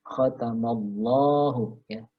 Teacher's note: Dan la-nya sendiri lafaz jalalahnya dibaca panjang 2 harokat · Jadi kalau ada lafaz Allah ya didahului oleh huruf berharokat fathah maka dia termasuk bacaan tafkhim lam yang dibaca tebal